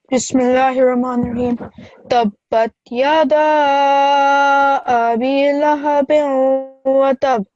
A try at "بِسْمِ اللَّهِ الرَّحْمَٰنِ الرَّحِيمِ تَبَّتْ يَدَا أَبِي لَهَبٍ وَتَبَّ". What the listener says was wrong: Abi, because this is a ya madda. Also, when you recite Bismillah, you have to recite it fully. So don't rush through reciting Bismillah.